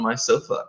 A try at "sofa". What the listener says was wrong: I noticed you put a little accent on sofa. It's not necessary. In English, we pronounce sofa. No, it's true. They don't exist, those accents.